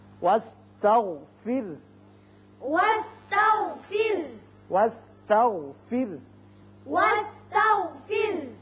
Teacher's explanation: یہاں را بھی باریک ہوگا اس لیے کہ پیچھے زیر ہے